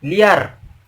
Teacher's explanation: Itu seperti kita membacanya itu seperti ada huruf Y di tengahnya, di antara huruf I dan huruf A. Liar. Seperti huruf L, I, Y, A, dan R. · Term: bunyi pelancar